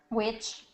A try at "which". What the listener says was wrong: Good, right? Not which, but which. Excellent. Perfect.